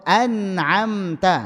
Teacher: Itu ada tapi hanya pokok ghunah. Tidak sampai dipanjangkan ya. Dia hanya pokok ghunah. · Ghunah yang kurang sempurna atau yang tidak dipanjangkan. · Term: ghunah naqisah